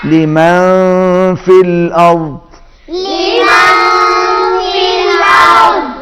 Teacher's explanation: نون پر اخفا ہوگا اور دوسرے نون پر غنہ ہے, آواز ناک میں جائے گی, تشدید ہے.